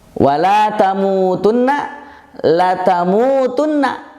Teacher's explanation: La-nya dikurangi jadi pendek.